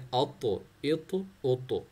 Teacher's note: आ को त्वा के साथ मिलाना है, त्वा एक तो हैवी लेटर है, दूसरा क्या है, त्वा अगर साकिन हो जाए, जज़म हो जाता है, तो फिर वो बाउंस लेटर भी बन जाता है, तो 2 क्वालिटीज़ इसके अंदर आ जाते हैं।